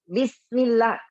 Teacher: Orang tahu itu sin, tapi tidak bagus karena sinnya belum sempurna mengalir. Harus sifat rakhwahnya.